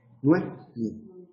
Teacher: podríamos incluso decir Noemí en dos sílabas y tendríamos un caso de sinéresis.